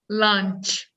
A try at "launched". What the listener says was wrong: nope you went back to lunch see that's the problem it's too close